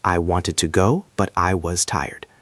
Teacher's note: The intonation here is very specific. You go up on the first part and down on the second part. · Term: Up, then down